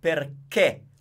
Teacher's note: This word has one way of being pronounced, and it's perché with the closed E.